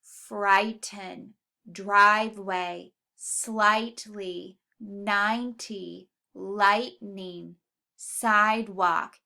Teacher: all of the I sound should be accented in the first syllable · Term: accented syllable